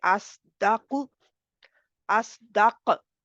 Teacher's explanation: अगर ऐसा ना किया जाए तो ये जा और सीन के मुशाबे हो जाएगा, क्योंकि जाहिर है कि आपने मोटा किया नहीं, मजबूती से उसको अदा नहीं किया, आपने अस स्वाद की भी चलेगी लेकिन मोटा रहेगा। ज़ुबान की जड़ ऊपर उठी हुई है, और प्रेशर जो है, अगर आपने प्रॉपर प्रेशर नहीं डाला और उसको मोटा नहीं किया, ज़ुबान की जड़ पीछे से ऊपर नहीं उठाई, तो ज़ाहिर वो ज़ाय और सीन की तरह हो जाएगा, उनके मुशाबे हो जाएगा।